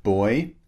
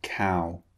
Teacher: sounds are both two vowels squeezed together as we've seen before when we make these sounds the shape of our lips and mouth changes in the middle of the sound